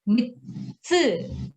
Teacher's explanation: Okay, because this is a small tsu, so mitsu. So the T sound will be little bit stretched.